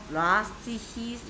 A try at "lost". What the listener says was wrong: last 아니 lost